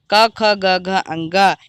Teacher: का वर्ग का, ख, ग, घ, अंगा इन सभी वर्णों का उच्चारण स्थान हमारा कंठ होता है। हमारे कंठ से ये का वर्ग के सभी वर्ण उच्चरित होते हैं, इनका उच्चारण स्थान कंठ हो जाता है।